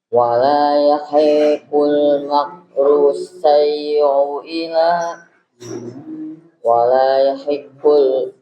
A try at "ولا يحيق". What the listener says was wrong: panjang. Wala yahiqul hi-nya panjang.